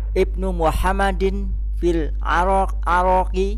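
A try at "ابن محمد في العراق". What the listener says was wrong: Ada kota namanya Arak. Irak. Tidak ada Arak. Irak ada. Nah, Irak. Nah, Irak ini. Nah, Irak.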